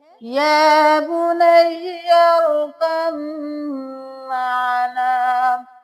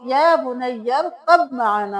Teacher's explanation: यहाँ पे हम बा को बिल्कुल खत्म कर देंगे, काफ को मीम के साथ मिलाएंगे। तो हम यहाँ पे कब माना नहीं करेंगे बल्कि काफ के बाद मीम के बाद आएगी।